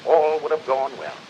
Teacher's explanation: teddy roosevelt had very lip rounded vowel sounds